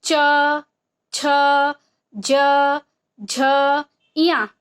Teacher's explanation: हमारा जीभ जो है वो स्पर्श करता है, ऊपर वाले तालु को छूता है। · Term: तालव्य